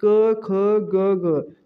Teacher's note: तो उच्चारण स्थान दोस्तों आपको याद होना चाहिए कि क वर्ग के व्यंजन है उनका उच्चारण स्थान है कंठ